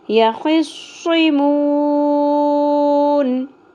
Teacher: میم کے اوپر پیش واو مدہ ایک الف کے برابر کھینچنا تھا لیکن لاسٹ لیٹر ساکن ہو جائے گا وقف کی صورت میں تو اس لیے یہاں پر ہم مد عارض وقفی کریں گے.